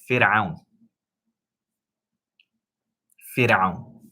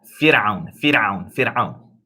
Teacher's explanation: Now, the ra in Fir'aun, that ra is pronounced light. You don't say fir.